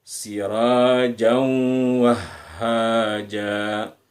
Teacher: Kemudian terakhir ja, kita tidak baca jan tapi kita baca ja. Kita baca satu hurufnya atau fathahnya kita baca sepanjang 2 ketukan